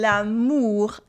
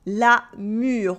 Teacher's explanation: It's like the difference between l'amour, love with the OU sound, and la mûre, the berry, la mûre with the sound U